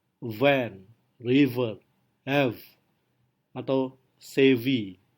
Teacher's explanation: Produksinya sama seperti di mana kita menggerakkan gigi bawah menyentuh bibir atas. Tapi karena ada getaran maka dia lebih voice. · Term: voice labiodental frictif